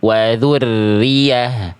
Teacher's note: Nabar itu menekan suara hurufnya lebih kuat sehingga nada pada huruf ya itu lebih menonjol, lebih tershow off. Wa dzurriyyah itu nggak ada nabar, harusnya itu bahkan nggak bertasydid, harusnya wa dzurriyyah.